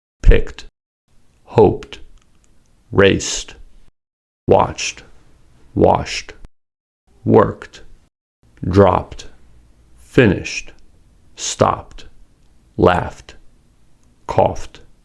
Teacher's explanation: /t/ is blended together with the previous consonant as a consonant cluster. So /t/ is not pronounced as an extra syllable.